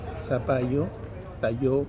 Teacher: La palatal lateral también se pierde, se transforma en otro sonido, zapallo, tallo.